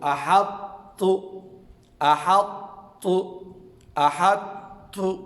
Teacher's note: اس کو ہم اس طرح پڑھیں گے، حمزہ زبر آ، ہجے کرتے وقت حمزہ زبر آ، ہا طا تا زبر حط، تا پیش تو احط، احط، احط، طا بھی پر ہو اور پھر آخر میں تا باریک ہو